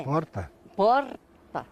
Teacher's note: Aqui vivem descendentes de italianos e por aqui o R fica bem mais fraco. O R, né? Porta.